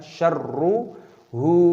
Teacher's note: “Kana syarru.” “Syarru”, kata ‘ra’nya ada tasdidnya. Kita tekan, kita gabungkan, kita pertahankan.